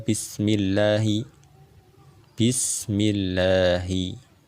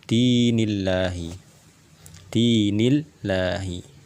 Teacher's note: kita tipiskan lam di lafazh jalalah